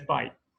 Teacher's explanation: Actually, it's pronounced bite with a glottal stop at the end.